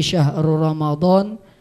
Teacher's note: Kalau ra itu hukumnya idgham bila gunnah, dan di situ tidak ada gunnah, tidak ada dengungnya, dan tanda tajwidnya, tanda gunnahnya pun juga tidak ada di sana, tidak ada tanwinnya.